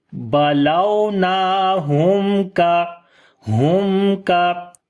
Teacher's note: We make a clear sound of mim here, we do not make nasal sound.